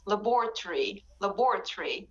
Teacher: so the o in the british accent at the end before the r and y is not pronounced it is very very weak so you don't say ori you say uri laboratory and kayla